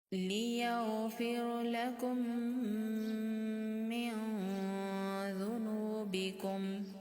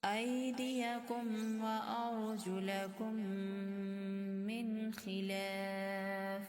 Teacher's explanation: میم ساکن کو میم مشدد کے اندر ملا دیں گے اور غنہ کے ساتھ ادا کریں گے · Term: ادغام شفوی